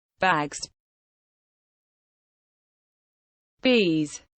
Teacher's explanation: Se o son final da palabra é sonoro, hai que pronuncialo como Z.